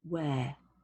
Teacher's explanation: Notice here in the phonetic script, there's a very small R at the end. Some people put the R on the end, especially Americans. I don't, I just say where.